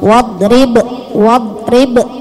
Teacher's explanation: Wadrib, ingat dudnya bukan huruf qalqalah, jangan wadrib, do-nya ditahan tapi ba-nya dipantulkan karena qalqalah